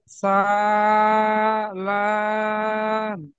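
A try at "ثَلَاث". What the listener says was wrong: আচ্ছা, একটা জিনিস খেয়াল রাখবেন, আপনি যেমন পড়ছেন তা সা, আপনি ঠিক টেনেছেন, কিন্তু এই যে তা সা লাম আপনার টানা হচ্ছে। তাই একালিফ টান দিতে হয়, সায় একালিফ টান দিতে হয়, আর লামে গিয়ে তিনালি পরিমাণ টান দিতে হয়। আপনি যদি তা আর সাকে একটু ছোট ছোট টান দেন, আর লামটা একটু বড় করে টেনে দিলেন, এটাও তো কিন্তু সমান হয়ে যাবে, তাই না?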